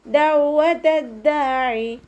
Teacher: ദാലിൻ്റെ കൂടെ മദ് വന്നിട്ടുണ്ട്, 2 കൗണ്ട് നീട്ടിക്കൊടുക്കുക.